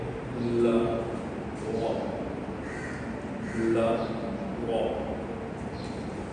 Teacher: try to curve the back part of your tongue and try to bring it closer to your velar. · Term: dark L